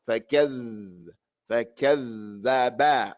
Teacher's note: And this letter, the dal, the sound flows in it when it has a sukun. So we have to hear the sound flow.